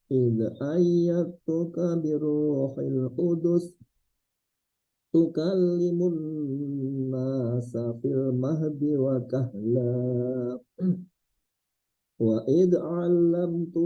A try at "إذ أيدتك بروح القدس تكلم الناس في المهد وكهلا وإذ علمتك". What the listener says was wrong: Jangan dipantulkan. Wa idz 'allamtuka.